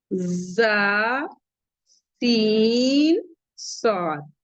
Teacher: जुबान की नोक और ऊपर और नीचे दोनों दरमियानी दांतों का किनारा जबान की नोक ऊपर और नीचे दो के दोनों दरमियानी दांतों के किनारे यानी सना औलिया और सनाए सुला इन तीनों हुरूफ में सीढ़ी की आवाज निकालती है। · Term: सीटी की आवाज